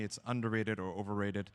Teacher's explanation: Listen to how the pitch goes up in those underrated, overrated.